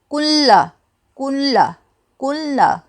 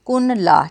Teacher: تو یہ دیکھیں نون تو بالکل ساکن ہے، نون کے اوپر جو ہے کوئی اعراب نہیں، یہ سکون میں ہے۔ تو کاف کا جو اعراب ہے پیش، اس کو ہم لام کے ساتھ ملا کے پڑھیں گے کیونکہ لام کے اوپر تشدید ہے